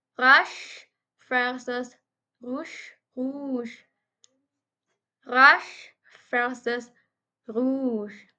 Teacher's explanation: Both consonants are post-alveolar fricative, meaning the tip of the tongue is close to the alveolar or teeth ridge, while the front of the tongue is concave to the roof of the mouth.